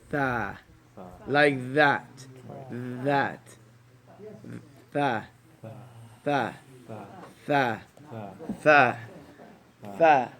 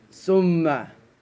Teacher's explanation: the tongue goes under the teeth, a little bit of air comes out